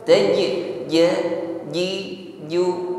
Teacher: Jim di sini sifatnya asyiddah bukan Hames tidak mengeluarkan desis ketika mengucapkannya